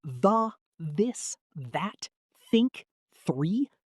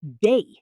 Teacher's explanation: Your tongue actually has to touch the back of your top teeth. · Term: th sound